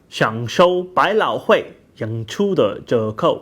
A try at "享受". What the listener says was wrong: So there was one tone wrong there. He said 享受. He kind of the show, he pronounced it as a first tone, but you know, most of the rest of it was right.